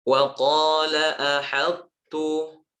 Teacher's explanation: Wa qala ahadtu to dimasukkan ke sifat tebalnya, ahad baru ke tipis dari huruf ta.